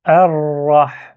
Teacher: C'est pas la lettre R, c'est un R roulé.